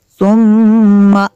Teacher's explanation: ثم میم شدد ہے، یہاں پہ غنہ کریں گے۔